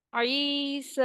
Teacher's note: سین کے اوپر کھڑی زبر ہے تو اس کو بھی ہم 2 کاؤنٹ اسٹریچ کریں گے